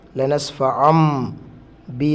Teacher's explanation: ശേഷം ബാ വരുന്നതുകൊണ്ട് നമുക്കറിയാം നൂനിനെ മീമാക്കി ഉച്ചരിക്കണം. തൻവീനാണെങ്കിൽ അവിടെ മീമാക്കണം.